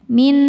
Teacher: Cara bacanya nun yang sukun ini dileburkan ke nun kedua disertai bunyi dengung. Jadi bunyi n tahan ya. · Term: idgham bi gunnah